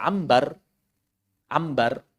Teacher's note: Seluruh orang Arab sepakat nun ketemu ba pasti berubah jadi mim.